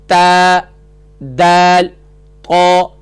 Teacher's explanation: اس کی جب اوپر والی جانب جب دبا کے لگاتے ہیں زور سے تو یہ یہاں سے ادا ہوتے ہیں تا، دال، طو، یعنی کہ اس کا مخرج ہوا زبان کی نوک اور ثنایا علیہ کی جڑ سے ادا ہوتے ہیں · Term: حروف نطعیہ